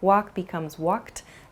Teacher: You might hear a word like walked also, which has a sort of T sound about it.